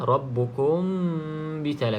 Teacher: Mim mati bertemu dengan ba, rabbukum bisalah, kena dengung dua harakat. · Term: ikhfa syafawi